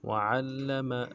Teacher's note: عین کو موٹا ادا کرنا ہے، عین کی زبر کو اگلے لام کے ساتھ ملانا ہے، لام کے اوپر تشدید ہے، زور دیں گے اور میم کو نرم سے پڑھیں گے۔